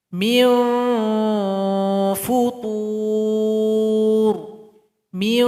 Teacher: ujung gigi seri paling atas tempelkan ke bibir paling bawah sini setelah ditempelkan maka disitulah tempat keluar ikhfanya Meo foto Meow